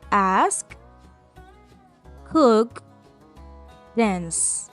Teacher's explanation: Al final, la última sílaba de esos verbos no vibra tu garganta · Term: sonido sordo